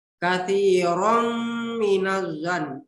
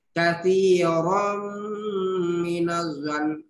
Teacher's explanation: Karena ada fathatain bertemu dengan huruf mim. Jadi dibaca berdengun. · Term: idgham di gunnah